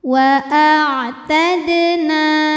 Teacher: sukunnya sukun asli dan berada di tengah bacaan maka cara bacanya huruf Dal ini dipantulkan dengan pantulan yang kecil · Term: Qalqalah Sugra